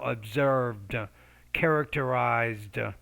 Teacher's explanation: the ed when it's at the end especially after voice consonants you want to pronounce it as a d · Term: d sound